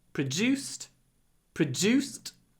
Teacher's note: you can hear how my du is pronounced like J produced it's like I'm saying juice produced produced in the pancreas